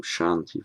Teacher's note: Sh on its own, that's the palatal sh.